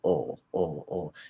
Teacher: the back of the tongue doesn't really push back, right? It's going to bunch up a little bit, and so it can kind of maybe take up a little extra space there, but it's kind of like the schwa is just being, the is being pushed into the back of the tongue, and you get ul. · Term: half L